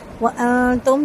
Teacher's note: وانتم نون ساکن کے بعد تا ہے باریک اخفا ہوگا